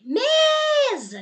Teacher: Então, neste caso aqui, você viu que a sílaba que se prolongou foi o me. Realmente, esta é a sílaba tônica.